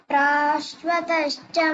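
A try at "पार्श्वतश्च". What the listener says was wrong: First is Pa, then Ra. Parshvatascha.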